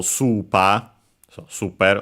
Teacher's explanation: Yeah, accented on the first syllable, super, so super, like in English.